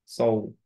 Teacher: সৌ যখন বলবো তখন খেয়াল করতে হবে আমাদের মুখটা রাউন্ড হচ্ছে